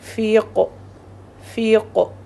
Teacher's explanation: قوف کو ہم ساکن کر دیں گے، کلکلا ہوگا